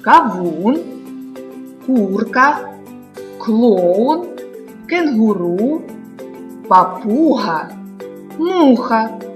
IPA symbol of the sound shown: у